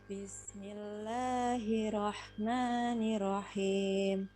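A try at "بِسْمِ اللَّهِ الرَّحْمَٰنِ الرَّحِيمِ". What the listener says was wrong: Nah, ini double-nya. Coba perhatikan yang hirrah. Roknya 2 itu. Hirrah. Ma. Nirrah.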